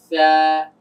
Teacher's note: জিহ্বার আগাটা এসে দাঁতের আগার সঙ্গে লাগবে। জিহ্বা যেন বাহিরে বের না হয়